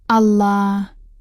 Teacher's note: huruf lam dibaca dengan ditekan dan dipanjangkan dengan dengung